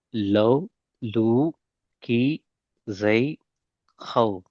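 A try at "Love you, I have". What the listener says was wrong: ஜ சவுண்ட் மாறிக்குது. ஜெய், ஜெய். இல்ல ஜெய் அல்ல, ஜெய் அல்ல, ஜெய். ஜ சவுண்ட் வரணும். ஜெய், ஜ.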